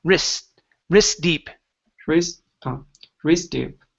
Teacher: So we don't need to pronounce that T. It's trapped between two consonants.